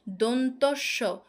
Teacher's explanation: আমরা যখন দন্তস্ব বলছি সেটা কিন্তু দাঁতের সঙ্গে লাগছে, দাঁতের মূলের সঙ্গে গিয়ে লাগছে। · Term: দন্তমূলীয়